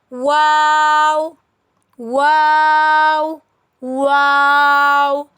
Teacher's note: वाव हंठों से अदा होने वाला हर्फ है